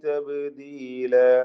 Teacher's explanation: തബ്ദീല ബാഇന് ഖൽഖല സുഗ്റ നൽകുക